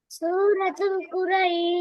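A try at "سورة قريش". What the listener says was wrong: তুল বলা যাবে না মা, তুল না, তু। সূরাতু কি বলতে হবে? হ্যাঁ, এখানে লাম নাই, এখানে তো লাম আছে, তু এর পরে লাম আছে। হবে সূরাতু, সূরাতু কুরাইশ মাক্কিয়া।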